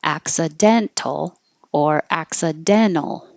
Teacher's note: the T after the N and the unstressed syllable, you can just drop it